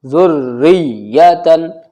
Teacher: را کے نیچے زیر ہے باریک پڑھی جائے گی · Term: را باریک